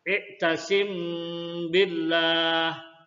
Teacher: cara membacanya adalah dengan menyamarkan bacaan mim sukun mati di bibir sambil didengungkan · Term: Ikhfa Syafawi, ikhfa sapawi